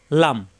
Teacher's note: জিব্বার আগার কিনারা উপরের দাঁতের গোড়ায় লাগবে